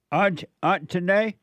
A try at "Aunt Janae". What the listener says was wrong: No, Aunt Janae. No, without the T, not Aunt. it's Aunt.